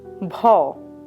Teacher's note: Voiced aspirated labial plosive